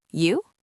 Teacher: Or if you want to be even faster and more casual, you can just say the word you with a rising intonation